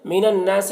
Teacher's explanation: نون مشدد نون میں غنہ کریں گے